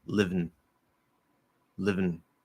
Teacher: I'm actually, before I even release that V, I can close the N. I'm not saying in, I'm not saying un, I'm not reducing it. I'm dropping the vowel completely. I'm eating that vowel. · So live, vn, vn, vn, vn. I'm actually, before I even release that V, I can close the N. I'm not saying in, I'm not saying un, I'm not reducing it.